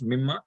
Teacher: the noon is a noon sakin, that's why there's an idgham there, and that's why it is pronounced as mimma